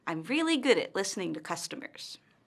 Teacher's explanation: notice how her intonation falls at the end of the statement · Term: falling intonation, Falling intonation